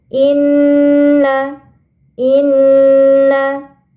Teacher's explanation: ada huruf nun bertasydid ini dinamakan gunah huruf gunna maka harus ditahan dulu sebentar